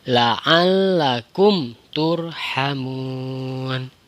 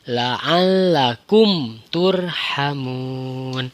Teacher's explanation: Jadi mim matinya itu dibaca jelas. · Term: izhar syafawi